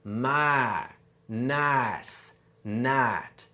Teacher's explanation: for a southern accent, we cut off that second sound, which gives us my, nice, night. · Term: I shift